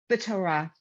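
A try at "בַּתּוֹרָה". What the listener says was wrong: Betoda, that's a dalid. Betoda.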